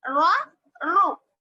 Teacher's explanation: را پر زبر یا پیش ہو تو را کو موٹا پڑھیں گے, ٹھیک ہے. را پر زبر یا پیش ہے تو را کو موٹا پڑھیں گے.